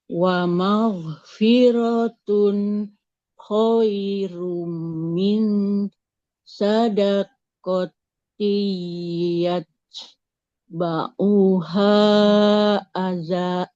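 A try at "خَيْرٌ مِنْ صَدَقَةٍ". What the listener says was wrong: Nah, khairum min bukan sadaqo ya. ini huruf sod, bukan huruf sin. Khairum min sadaqati yatba'uha aza.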